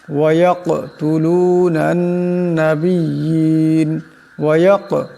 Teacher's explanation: কাফ কলকলার হরফ, সাকিন আওয়াজটাটি ঝটকা খাবে, কলকলা হবে। ওয়ায়াকতুলুনান এখানে নুন, এই নুনকে ধরবে, নুনের ওপর তসদিদ আছে, নুন মুশাদ্দাদের একালে পরিমাণ গুণ্য হবে।